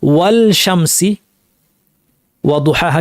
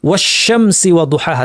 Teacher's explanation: লাম সাকিনের পর শিন জবর আসছিল, লামকে শিন বানিয়ে, দুইটা শিন একসাথে যুক্ত করে তাসদিদ দিয়ে একটি শিন বানিয়ে পড়েছে, তার মানে ইদগাম করেছে, তাহলে আশ-শামস পড়েছে।